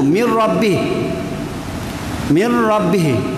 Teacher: Maknanya kita sempurnakan, langsung tidak ada bunyi nun. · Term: idgham kamil